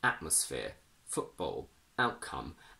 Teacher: when the letter t is followed by a consonant we use a glottal stop inside a word